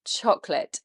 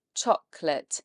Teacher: It's actually only 2 syllables in English. We don't say that middle O, it's silent. Chocolate. And it's not late, so don't try and read it phonetically.